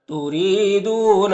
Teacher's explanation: نیچے زیر را کو باریک پڑھیں گے، یا مدہ ہے، ایک الف کے برابر کھینچیں گے.